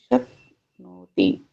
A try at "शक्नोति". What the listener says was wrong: जितना समय नो में लग रहा है, क्या उतना ही समय ती में भी लगना चाहिए? तो लग क्यों रहा है? नो दीर्घ है, ती ह्रस्व है, शक्नोति। अब शक्नोति कर देंगे तो नो और ती का टाइम तो एक ही हो गया ना, गलत हो गया। एक मात्रिकम द्विमात्रिकम त्रिमात्रिकम च। ह्रस्व के लिए एक मात्रिकम, दीर्घ के लिए द्विमात्रिकम, प्लुत के लिए त्रिमात्रिकम। प्लुत अभी आ नहीं रहा है, ह्रस्व और दीर्घ यही है।